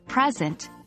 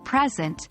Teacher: if we stress the first syllable present we're talking about a gift but if we stress the second syllable present it's a verb meaning to show or give something to someone now let's move